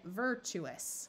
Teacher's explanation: we split right here and get virtuous here's another example where the TU winds up sounding more like CH just because it's hard to say all right go ahead and